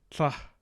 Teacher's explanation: We have our lateral affricate or aspirated lateral affricate